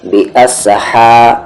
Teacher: ہا کا بھی مخرج وہی ہے جو کہ عین کا ہے، یعنی کہ بیچ والا حلق